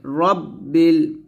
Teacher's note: আমরা এখানে অনেকে একটা ভুল করি সেটা হচ্ছে রাব্বিল বলি তো রাব্বিল বলা যাবে না র মোটা করে রব্বিল